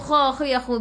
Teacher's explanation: biar ada angin biar menggelegak